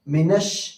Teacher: شین کے اوپر بھی تشدید ہے, جس حرف پر تشدید ہوتی ہے اس کو 2 مرتبہ پڑھا جاتا ہے